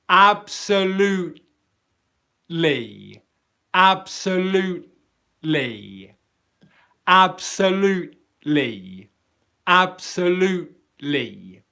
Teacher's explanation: I'm going into the T position, loot. And I'm pausing airflow